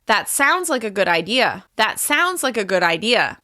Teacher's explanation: By saying this statement with falling intonation at the end, I'm showing confidence.